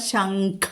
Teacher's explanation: അനുസ്വാരത്തിനു ശേഷം ഖുള്ള അക്ഷരം വന്നിരിക്കുന്നു ശംഖ എന്ന് വരണം അത് വരണം അവിടെ അനുസ്വാര നിയമം അനുസരിച്ചിട്ട് കവർഗ്ഗത്തിലെ അനുനാസികം വന്നിരിക്കുന്നു